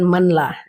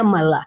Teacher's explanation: Idgham bila gunnah itu nun ketemu lam maka nunnya dihilangkan.